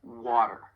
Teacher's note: So the flap T, it sounds more like a soft D, and it often occurs when the T comes between two vowel sounds, like in the word water. You don't hear a true T, you hear a flap T when I say it, water.